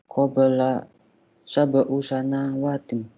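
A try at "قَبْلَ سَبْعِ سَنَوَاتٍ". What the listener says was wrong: Di kasroh, harokatnya di bawah. Sab'i.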